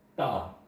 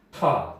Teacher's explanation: 이쪽 부분에 대어서 대부분 발음이 납니다. 다 발음하다 보면 혀가 윗 잇몸 뒤에 붙어서 발음 나는 걸 알 수 있을 거예요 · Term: 잇몸 소리